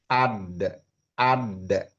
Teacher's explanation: makhraj huruf dal itu adanya di belakang gusi gigi seri atas. Jadi enggak keluar ya.